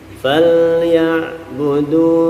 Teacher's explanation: Fal kita tempelkan ujung lidah kita di makhraj lam supaya tidak memantul.